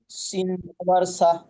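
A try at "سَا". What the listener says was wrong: সিনটাকে তিন আলিফ টান দিতে হবে।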